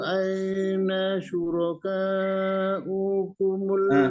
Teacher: U-nya itu dibaca pendek karena wawunya itu hanya ditumpangi oleh hamzah, yang dibaca hamzahnya, ya.